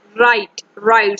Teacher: So in write, the W letter is silent, because when we pronounce this word, that is right. So the initial sound is R, not W. So W is silent.